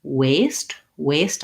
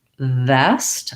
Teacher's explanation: notice that the w has rounded lips and my teeth are not involved so if i'm saying waist waist i shouldn't feel any connection